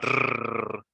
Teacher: This sound, this is a difficult sound to make, at least for Spanish speakers, because in Spanish, we vibrate the tongue. We make a r sound in Spanish.